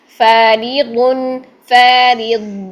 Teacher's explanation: یہ دیکھیں الف یہاں پر باریک پڑھا جائے گا، یہاں پر موٹا الف نہیں ہوگا، کیوں؟ کیونکہ فا باریک حرف ہے، الف سے پہلے باریک حرف آ گیا تو الف بھی فا بنا، فا نہیں کیا۔